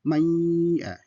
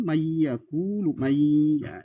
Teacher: Nun ketemu dengan ya itu dibaca dengan dengung. Yang nun mati ketemu dengan ya dengan baca salah satu contohnya maya, ya kan, dengan dengung, jadi masuk ke hidung, mayakulu, maya, itu masuk kategori idgham. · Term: idgham bigunah